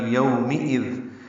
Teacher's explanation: یو ہونٹوں کو نا تمام گول کرنا ہے